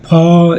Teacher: ये इस ये अल्पप्राण नहीं होता ये महाप्राण होता है